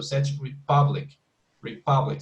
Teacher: It's 2 different words. Such is actually just 1 syllable, and the stress would be in the U in Republic.